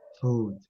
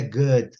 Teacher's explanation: Um Uzinho assim, meio prolongado, né?